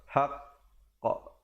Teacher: Qaf di situ adalah qalqalah akbar, haqq, ya? Jadi berikan pantulan di situ. Qaf merupakan salah satu daripada 5 huruf qalqalah.